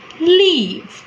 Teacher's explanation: Okay, so the leaf, which is very simple, the L here is known as a clear L, and we use the square brackets to denote allophones.